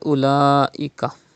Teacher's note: There is Hamza after Khada Zabar. It is Madde Muttasil. You have to stretch up to 5 harakat.